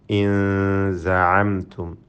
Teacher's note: ഇൻ എന്ന സകിന നൂനിനെ ഇഖ്ഫ ഹഖീഖി നൽകി അവ്യക്തമാക്കി മണിക്കണം. ഇൻ സഅംതും. അപ്പോൾ അവ്യക്തമാക്കുക നൂനിനെ, എന്നിട്ട് മണിക്കുക. · അപ്പോൾ അവ്യക്തമാക്കുക നൂനിനെ, എന്നിട്ട് മണിക്കുക. നൂനിൻ്റെ മഖ്റജിൽ നാവ് പൂർണ്ണമായും ടച്ച് ചെയ്യിക്കാതെ അവിടെ അമർത്തി വെക്കാതെ അല്പം നാവിനെ അകത്തി വെച്ചുകൊണ്ട് ഉച്ചരിക്കലാണ്.